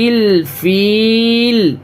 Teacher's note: جیسے یہاں پہ فیلی یعنی لام کے نیچے زیر ہے تو اب یہاں پہ ہمیں لام پہ سکون لانا ہے تو فیلی سے یہ فیل ہو جائے گا